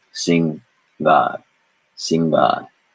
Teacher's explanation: That symbol we never use, but it is the first line which starts in the back of the throat, as we learned 2 lessons ago. And so there is no nasal vowel in this at all. It is just an N conjunct with ga.